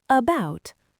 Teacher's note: The stress is on the second syllable about. Because the first syllable is unstressed, that letter a turns into a lazy schwah